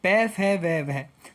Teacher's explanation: ये जो प वर्ग हैं ये ओष्ठ है, ओष्ठ से बोले जाते हैं